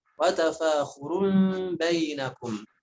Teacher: Di sana ada iqlab, ya, tanwin dhammah bertemu dengan ba juga sering banyak ditinggalkan, harusnya ditahan 3 harokat, ada sebagian yang membacanya 1 atau 2 harokat.